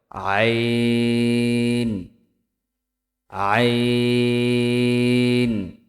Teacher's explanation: কণ্ঠনালীর মধ্যখান হইতে উচ্চারিত হয়